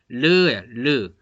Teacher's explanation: 공기가요. 이 혀 양쪽으로 그냥 흘러나와요. 뭐 막는 게 없어요. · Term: 유음